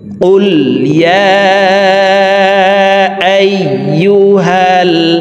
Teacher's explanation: কফ হরফকে জিহ্বার গোড়া তার বরাবর উপরের তালের সঙ্গে লাগাইয়া উচ্চারণ করব।